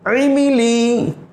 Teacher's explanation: عین کو گلے کے بیچ سے ادا کیا جاتا ہے